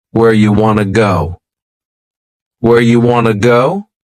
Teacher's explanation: You becomes ya and want to becomes wanna.